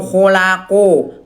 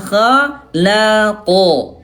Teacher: Nah nggak gitu bunda, ya tebalnya dengan cara mengangkat pangkal lidah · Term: huruf tebal